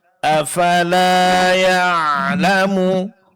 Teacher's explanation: pengucapan ain sukun, suara tidak terlalu ditahan, tidak pula terlalu dilepaskan, tapi pertengahan.